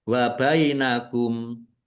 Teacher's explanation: Wa bainakum. Nah, kumnya dibaca wakof dan pendek karena tidak ada tanda panjangnya.